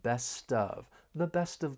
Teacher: we can link the final consonant sound in best with the vowel sound in of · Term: linking